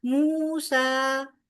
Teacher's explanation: واو مدہ اور آگے کھڑی زبر، موسیٰ، دونوں کو دو حرکت برابر لمبا کریں گے